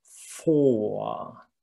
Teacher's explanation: for the O, my lips are very round, very closed